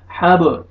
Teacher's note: با حروف قلقلہ میں سے ہے با پہ قلقلہ کریں گے ڈبل ساؤنڈ آئے گا